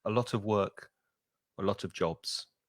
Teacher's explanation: the of almost disappears. You don't really hear it because it's weak.